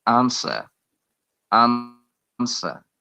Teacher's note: according to the British IPA, the R is silent